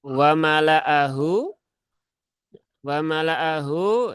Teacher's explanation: lamnya dibaca pendek tidak dibaca panjang